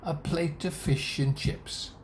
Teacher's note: And it's the nouns that are stressed. Plate, fish, chips.